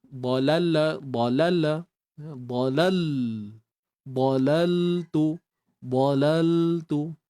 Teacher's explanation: matikan lam tanpa tawalud jangan beranakkan